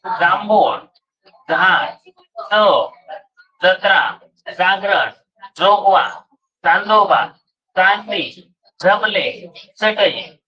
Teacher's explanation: दंत तालव्य अयुक्त, च छ ज झ यांचा उच्चार अयुक्त.